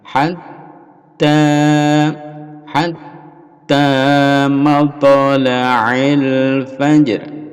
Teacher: Hatta ada tasdid ditekan ya, lalu dipanjangkan.